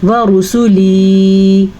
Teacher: را کو پر پڑھنا ہے کیونکہ را کے اوپر پیش ہے